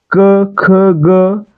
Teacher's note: ज्यांचा उच्चार करताना आपली जीभ आपल्या कंठ भागाला स्पर्श करते, म्हणजे आपल्या जिभेचा मागील भाग हा कंठाला स्पर्श करतो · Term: कंठवर्ण